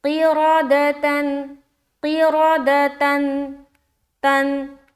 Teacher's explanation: گے، نون کی آواز کو ظاہر کریں گے، قِرَدَةً، قِرَدَةً، تن، آخر میں نون کی ساؤنڈ آ رہی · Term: اظہار